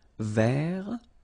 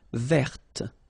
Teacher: So masculine form, don't pronounce the final T. Vert. Feminine form, verte.